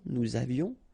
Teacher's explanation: final S not pronounced, and then little liaison